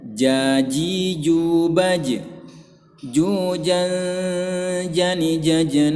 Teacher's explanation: dengan yang bertulang menyambar-nyambar tulang Nah maka makhroj huruf Jim disini dia tengah lidah bertemu dengan bagian rongga mulut atau langit-langit mulut bagian yang keras bagian yang keras yang bertulang